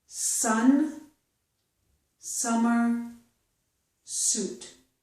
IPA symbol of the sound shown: s